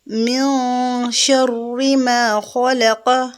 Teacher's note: یہاں جب نون ساکن ہے اس کے بعد شین آ رہا ہے حروف اخفاء میں سے، تو نون کی آواز کو ہم چھپائیں گے